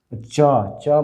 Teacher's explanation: च, च मतलब कंठ यहाँ से आएगा ऊपर, यहाँ आएगा च, तो च आपका तालु में आ जाएगा, तो इसको तालव्य